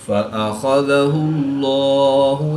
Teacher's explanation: اس میں جلالت اللہ عز و جل کے لام سے پہلے حرف پر پیش ہے، تو اس لیے اس لام کو پر یعنی موٹا پڑھیں گے۔